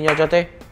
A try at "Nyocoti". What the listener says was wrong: Nyocoti. Nyocoti bukan Nyocote. Kalau Nyocote itu kayak ini, bacotnya gitu.